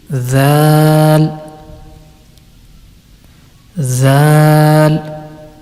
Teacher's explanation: Zal is pronounced when the tip of the tongue touches the edge of the upper two front teeth, and it will be Zal, Zal.